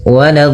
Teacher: la-nya jangan sampai tebal, jangan waladh, tapi la-nya tipis, waladh, baru di dhad-nya yang tebal